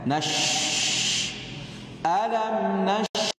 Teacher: Terbukanya dua pita suara, tidak ada getaran, udara mengalir dengan banyak. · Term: hams